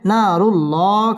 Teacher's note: আলিফ টেনে পড়তে হবে না রু র পুর হবে না রুল আল্লাহ শব্দের লাম পুর হবে